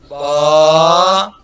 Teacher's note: ہونٹوں کے تار حصے سے با ادا ہوتا ہے، ہونٹ بند